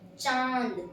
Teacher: अनुनासिक में मुंह और नाक दोनों से उच्चारण होता है। जैसे चांद, इसमें दोनों होता है।